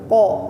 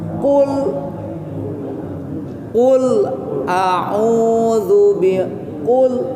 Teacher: jahar itu adalah tertahannya napas ketika mengucapkan huruf itu atau huruf qaf